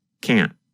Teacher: Instead of pronouncing the T, your tongue just comes to a stop against the hard part of the roof of your mouth just behind the upper front teeth. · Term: held T